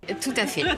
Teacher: there is a liaison in the middle so that we can hear the last T of tout.